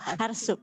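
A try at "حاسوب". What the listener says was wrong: Hasub. Nggak pakai R, Bu. Hasub. Hasub.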